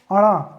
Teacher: जिह्वा मुड़ रही है, लेकिन साथ साथ क्या हो रहा है, नाक से भी इसका आवाज़ आ रहा है, इसलिए इसको प्लस हमने नासिका लिखा।